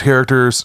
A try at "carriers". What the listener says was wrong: Pronounced carrier. You said characters.